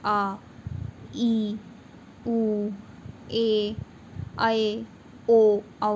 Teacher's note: दीर्घ स्वर जिनके उच्चारण में, जिनको बोलने में हमें इससे डबल टाइम, दुगना समय लगता है